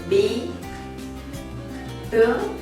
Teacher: bilabial, and it means that both lips are together